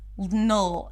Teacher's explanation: it's a dark L. So you want to round your lips just a bit and then create this tension in the back. Null as you're making the L sound.